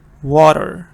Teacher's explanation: T is pronounced like a little D water now why is that happening it's because of the two